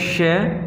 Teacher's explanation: श, ये तालु से उच्चारित होता है।